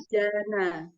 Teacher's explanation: Huruf ainnya dibuka lagi. Tenggorokan tengahnya.